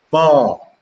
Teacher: But if it is pronounced with a rising tone, ma, it would mean a horse.